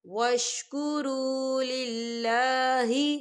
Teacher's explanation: اللہ کا نام جو ہے باریک پڑھا جائے گا، کیونکہ اللہ کے نام سے پہلے زیر ہے